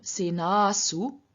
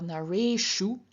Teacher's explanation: dental S turns into a retroflex sh. This happens even if the vowel is not immediately followed by S, but we actually have an anuswara or a visarga intervening between the vowel and the S.